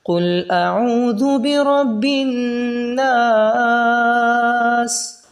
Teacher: سین کی آواز اچھے طریقے سے نکلے گی، اور سختی سے ادا کریں گے سین کو، اور سیٹی بھی نکلے گی